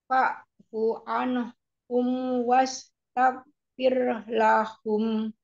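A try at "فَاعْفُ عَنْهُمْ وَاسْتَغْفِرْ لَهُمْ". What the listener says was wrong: Fa'fu anhum, jangan anhum, jangan ada jeda. Jadi suaranya terus nyambung. Fa'fu anhum anhum. Jadi jangan anhum, jangan diputus. Anhum, jelas, annya jelas. Anhum.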